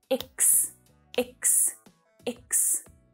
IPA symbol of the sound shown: ɪks